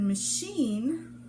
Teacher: in the word machine, the CH makes a SH sound